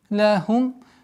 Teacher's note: لهم. Четкое произношение мимо. Так называемый идхар аш-шафави. Губная ясность.